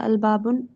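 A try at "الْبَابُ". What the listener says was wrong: हाँ बा अल बाबू। जब अलिफ लाम आ गया ना तो अब यहाँ आखिर में तनवीन नहीं आएगी।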